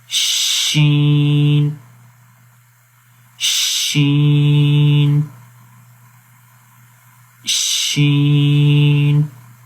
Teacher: شین میں ویسے بھی زبان کا درمیان تالو کے درمیان میں بالکل کمپلیٹ ٹچ نہیں کر رہا بلکہ تھوڑا سا گیپ ہے